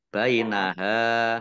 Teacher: hak fathah alif matobi'i panjang 2 harokat